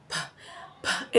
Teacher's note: The P sound is, let's articulate it. P, P is a voiceless, bilabial, oral, plosive consonants.